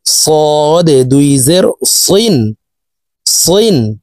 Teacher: সদের উচ্চারণ একটু মোটাভাবে উচ্চারণ করতে হবে।